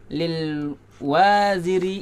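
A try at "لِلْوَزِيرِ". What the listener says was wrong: Wanya pendek.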